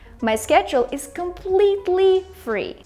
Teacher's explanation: Say completely longer and more emphasized. Say free shorter and less emphasized.